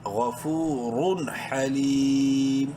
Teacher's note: غفورن، لیکن تنوین کے بعد چونکہ ہا حروف حلقی میں سے ہے اس لیے یہاں پر اظہار کریں گے، ظاہر کر کے پڑھیں گے. ہا زبر ہا، لام یا زیر لی، یا مدہ ہے، لام کو ایک برابر لمبا کریں گے.